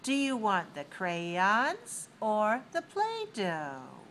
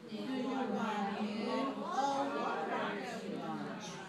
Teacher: Put your stress on the two choices. Use rising on the first one and falling on the second one.